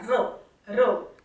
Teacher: आता राम म्हटलं तेव्हा र म्हटलं तेव्हा माझा जिभेचा टच टाळूला झाला, र र स्पेसिफिक दाब माझ्या जिभेने तिथे दिला.